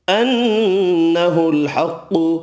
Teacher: نون مشدد پر غنہ کریں گے، قاف حروف مستعلیہ پر پڑھا جائے گا۔